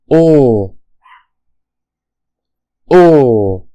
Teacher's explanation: The next vowel is O. As we can hear, this is a long and close vowel sound.